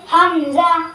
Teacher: حمزہ حلق کے اوپر والے حصے سے ادا ہوتا ہے